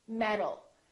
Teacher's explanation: word metal metal these two sounds sound exactly the same because the T changes into a d when it's between two vowels